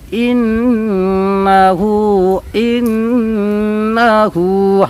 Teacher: حمزہ کو جلدی بولیں گے، نون کو بھی جلدی بولیں گے، صرف الٹا پیش کو کھینچ کر · نون پر تشدید ہے تو یہاں پر غنہ کریں گے ، انہو، انہو، حمزہ کو جلدی بولیں گے، نون کو بھی